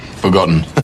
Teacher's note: You replace T with a glottal stop.